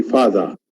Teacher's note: in British English, they usually drop the re sound when it comes after a vowel.